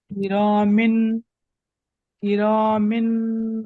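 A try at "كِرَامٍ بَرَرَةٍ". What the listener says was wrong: মিন নয়, মিন নয়, মিম, মিম, মিন। নুন উচ্চারণ হবে না ওখানে, তানবিন ও নুন সেখানে আওয়াজ হয় কি তো। এখানে যখন আমি কির মিন দুজের তানমিন যখন পড়বো তখন মিম নুনজের মিন, মিম নুনজের মিন, মিন উচ্চারণ হবে।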